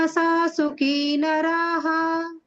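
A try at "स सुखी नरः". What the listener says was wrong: ನರಹ ದೀರ್ಘ ತೆಗಿತೀರಲ್ಲ ಮಾತಾಜಿ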